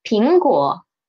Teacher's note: Okay, pay attention to this 果. It is a third tone and it is in a disyllabical word, so we should read it as a half third tone